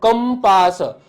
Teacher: તમે જ્યારે કંપાસ બોલો છો તો ક ઉપર ટપકું છે તો ત્યાં તમને ભાર અનુભવાય છે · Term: તીવ્ર અનુસ્વાર